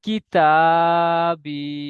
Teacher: ইয়া মাদ্দাকে এক আলিফ পরিমাণ টান দিয়ে পড়তে হয়